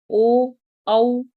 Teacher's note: कुछ वर्ण ऐसे हैं जो कंठ और होठों की सहायता से बोले जाते हैं। · आप यह वर्ण होठों की भी सहायता से बोल रहे हैं और गले से भी आवाज आ रही है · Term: कंठोष्ठ वर्ण, कंठोष्ठ्यो वर्ण